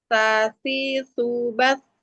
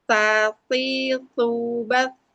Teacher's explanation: sa itu makhrajnya ada di ujung lidah ditempel ke ujung gigi seri atas